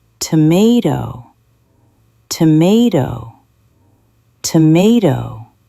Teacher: Tomato, tomato. Where is the beat? It is in the middle.